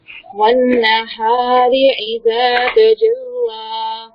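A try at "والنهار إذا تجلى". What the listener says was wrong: لام کو موٹا نہیں کرتے, لام کو باریکی پڑھیں گے. تجلی, لام کو نہیں موٹا کرنا. تجلا نہیں بولیں گے, تجلا.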